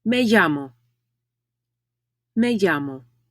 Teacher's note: Notice that the double L in llamo is pronounced like ya. Double L in Spanish does not make the L sound in English.